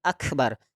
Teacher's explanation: Maka kalau kita menyebut akbar, Allahu akbar, jadi harus ada hamasnya karena sifat huruf kaf ini adalah ada hentaan nafas